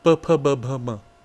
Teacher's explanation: a series which involves only the lips, closing, opening